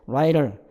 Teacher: letter, 그 writer 할 때 writer 이걸로 이제 flap 설타음이라고 하는 것에서 탁 빠르게 쳐주는 소리. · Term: flap R